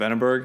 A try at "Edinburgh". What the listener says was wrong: You're throwing the hard G in Edinburgh.